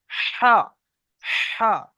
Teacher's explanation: এটা হচ্ছে বড় হা, হালকা আওয়াজ অর্থাৎ পাতলা আওয়াজ